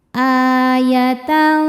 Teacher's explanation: A hukumnya mad badal. Sebab ada hamzah dipanjangkan. Alif dengan harakat fathah ini adalah hamzahnya.